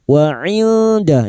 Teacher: nun sukun bertemu dal sama ikfa hakiki, samarkan bunyi nun sukun dan mendengung selama 3 harokat. Wa inda rasulih.